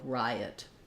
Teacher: The word riot is 2 syllables stressed on the first syllable. Letter I says the I diphthong.